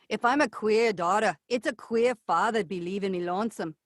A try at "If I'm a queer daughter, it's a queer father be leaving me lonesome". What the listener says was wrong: So the R's are wanting to drop still. So give me the pirate hook. Bring your hand up. And this is the R sound. So do me a favor and say, if I'm a queer daughter.